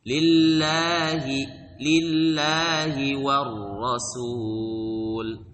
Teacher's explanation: Allah harus dibaca panjang dua harakat. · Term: mad asli